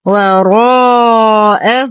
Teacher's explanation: نرقق الواو ونخلصها من تفخيم الراء، نفخم الراء وبعدها الألف بأعلى درجات التفخيم. لدينا ألف ساكنة ما قبلها مفتوح وبعدها همز بنفس الكلمة، المد واجب متصل يمد بمقدار 4 إلى 5 حركات.